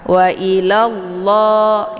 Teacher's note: lanya langsung dileburkan ke dalam lafzul jalalah lafaz Allah dan untuk lafaz Allah ini dibaca tebal ya karena sebelumnya harakatnya fathah